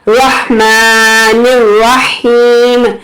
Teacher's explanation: ہم یہاں نہ الف پڑھ رہے ہیں اور نہ ہی لام پڑھ رہے ہیں، تو یہ یہاں پر حروف شمسی کا قاعدہ اپلائی ہوتا ہے۔